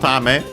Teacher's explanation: Tame on its own, accented on the last Mora. Becomes unaccented here with the possessive particle, because that's the rule of no.